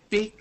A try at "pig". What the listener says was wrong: Yeah, it's coming out, it's almost coming out more like a K. So you want pig, g, pig.